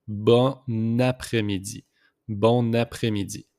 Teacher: We just make the liaison here with the N and A.